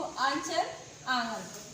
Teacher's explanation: जब हम मुख से आवाज निकालते हैं तो ये नाक को स्पर्श करती है, नाक या मुख को स्पर्श करके ये वर्ण निकलते हैं, इसलिए अनुनासिक है।